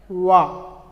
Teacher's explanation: V is a labiodental, whereas W is a bilabial sound. Bilabial means to produce this sound, our lips, both our lips come close in a rounded manner